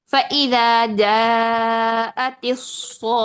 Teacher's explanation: हरूफ मद्दा के बाद तशदीद है, ये मद्दे लाजिम होगी, इसको हम 6 हरकत पढ़ेंगे लाजमी तौर पर, तो पढ़ते हैं इसको।